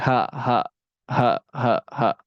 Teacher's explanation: di pangkal tenggorokan itu ada huruf hamzah dan huruf Ha